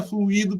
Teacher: a palavra fluido, que é uma palavra trissílaba, com a sílaba tônica em i